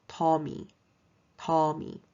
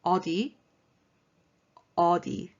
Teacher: i say d slash t because it's not a solid d and it's not a solid t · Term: airy d sound